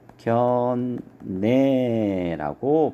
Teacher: 니은하고 리을하고 만나서 뒤에 있는 리을이 비음 니은으로 이렇게 바뀝니다. 그래서 발음을 하면 상견례라고 발음할 수가 있습니다. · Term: 비음화